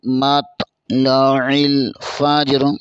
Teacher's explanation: تو کو بھی پر پڑھیں گے، عین کو بھی پر پڑھیں گے